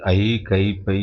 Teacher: ஐ, கை, பை என்னும் எழுத்துக்கள் தனித்து வரும் இடங்களில் தமக்குரிய 2 மாத்திரையில் குறையாமல் ஒலிக்கும். அதாவது ஐ, கை, பை என்னும் எழுத்துக்கள் தனித்தனியாக வரும் பொழுது அந்த எழுத்துக்களுக்குரிய 2 மாத்திரை, ஒவ்வொரு எழுத்துக்கும் 2 மாத்திரை இருக்கிறதல்ல, அந்த 2 மாத்திரையிலிருந்து குறையாமல் ஒலிக்கும்.